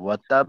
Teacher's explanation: আর শেষে কলকলা হলো বেশি কলকলা, বড় কলকলা।